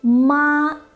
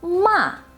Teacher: the high-level tone, the rising tone, the falling rising tone, and the falling tone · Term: 4 basic tones